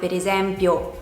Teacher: «E» can have the closed sound é in words like, pera (pear), mela (apple), velo (veil).